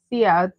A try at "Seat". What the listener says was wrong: The E sound doesn't have that. The E doesn't have that sound in Spanish.